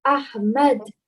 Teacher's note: The ha, again, is from the middle of your throat